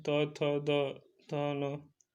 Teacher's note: दंत होते हैं त थ द थ न